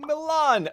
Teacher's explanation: the Milanese drops the final vowel to become Milan again